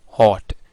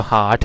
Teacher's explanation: हॉट ये थोड़ा सा राउंडेड वावल है, जबकि जो हार्ट है वो बिल्कुल वो उस तरह राउंडेड वावल नहीं है